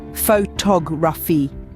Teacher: The stress falls on the second syllable, photography, not photography or photography.